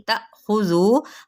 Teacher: حمزہ ساکنہ ہے تو یہاں پہ جھٹکا دیا جائے گا ، تا کر کے پڑھا جائے گا، ذو